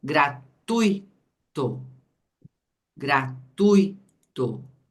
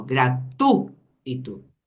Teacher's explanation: nós temos o ditongo e é um ditongo decrescente ó gratu Ito o i quase não tem som a mesma